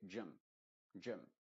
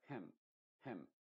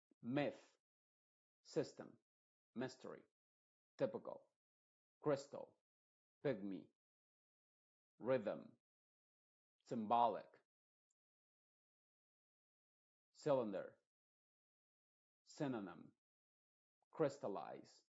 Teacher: la Y puede representar al sonido I modificado, es decir, como una especie de E, pero muy, muy apagada. Aquí no se va a decir gym, ni gem, muy claro, sino que gym, gym, bastante rápido, gym.